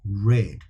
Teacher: sound I actually let my tongue go against the palate or I can say red where my tongue does not touch the palate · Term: R sound